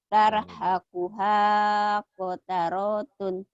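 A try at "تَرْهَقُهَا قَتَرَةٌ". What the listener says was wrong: Pendek semua. Hanya doang. Tarhakuha qataratun.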